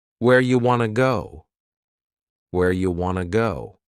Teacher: You becomes ya and want to becomes wanna. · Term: similar reduction